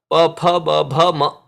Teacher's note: Now the best to understand would be the pavarga, pa, pha, ba, bha, ma. They are called oshtya, where the upper lip and the lower lip come together.